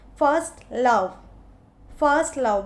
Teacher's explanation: फर्स्ट लव, both are stressed, स्पॉन्डी।